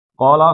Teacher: کاف کو موٹا پڑھنا ہے، 2 حرکتیں ہیں